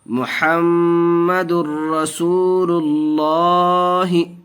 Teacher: دال را پیش در، محمد، را زبر را، محمد الرا، دیکھیے گنہ نہیں کریں گے، محمد غلط ہو جائے گا کیونکہ ادغام یرملون کا قاعدہ ہوگا۔ یہاں 2 پیش تنوین کے بعد ادغام یرملون کے 6 حرفوں میں سے را آیا اور را کی صورت میں بغیر گنہ کے پڑھتے ہیں